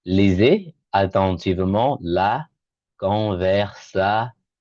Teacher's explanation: The S in between the two vowels in French sounds like a Z sound.